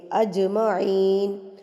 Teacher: قلقلہ میں پچھلی ویڈیوز میں بہت اچھے طریقے سے بتا چکی ہوں کہ 5 حروف قاف، طا، با، جیم، دال جب ساکن ہوں گے یا یہ ان پر وقف ہو رہا ہوگا تو ہم نے ان کو ہلا کے تھرتھراہٹ سے پڑھنا ہوتا ہے. تو اجمعین، جیم کو ہم ہلا کے یہاں پہ پڑھیں گے